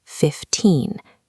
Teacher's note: With teen numbers, the stress lands on the second syllable. It's a long rising sound, 15.